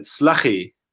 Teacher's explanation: He dropped the L altogether, the last L, so that he said slachi.